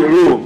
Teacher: High back rounded vowel